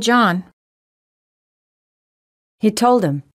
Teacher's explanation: we stress words like man book John and Mary but we don't stress he it her and myself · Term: stress nouns but not pronouns